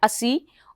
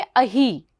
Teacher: दीर्घ इकार बना दिया। और स को ह आदेश होकर अही शब्द यहां पर बनता है।